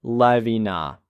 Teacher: the phrase live in a links together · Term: connected speech